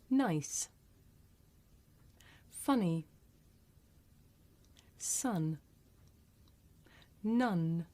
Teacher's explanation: the tongue blade touches the alveolar ridge so there's complete closure of the mouth and at the same time the palate is lowered so the air escapes through the nose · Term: voiced alveolar